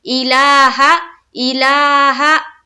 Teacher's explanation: ला में फिर एक अलिफ के बाकदर खींचना है और हा में नहीं खींचेंगे क्योंकि हा के ऊपर क्या है जबर।